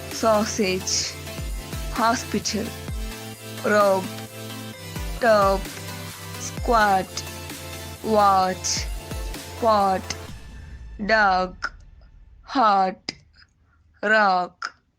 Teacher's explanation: the three-term description of the sounds are open, back, rounded